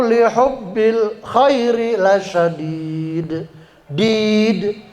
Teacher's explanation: Sama seperti tadi yang di atas itu asalnya mad asli atau mad thobi'i. Karena dibaca waqaf dia berubah menjadi mad arid lukun. Boleh dua harakat, boleh empat, boleh enam.